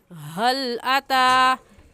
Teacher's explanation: ये हा हलक का आखिर जो सीने की तरफ है उससे निकलता है।